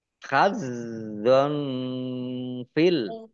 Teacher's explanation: fathah tanwin bertemu dengan huruf fa bacaan ikhfa dibaca samar-samar